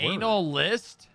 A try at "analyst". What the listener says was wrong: You didn't keep your mouth open long enough there, and you kind of just said anal.